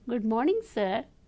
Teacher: automatically your voice falls down the intonation